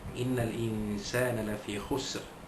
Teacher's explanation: Nun tasydid atau nun sabdu dibaca dengung dua harakat. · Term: wajibul gunnah